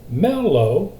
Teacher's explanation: mellow low is unaccented mel is accented